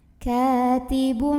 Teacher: Katibum, ada iklab ya karena ada tanwin dhammah yang ketemu sama huruf ba. Maka tanwin dhammahnya bunyinya diganti jadi bunyi mim sukun.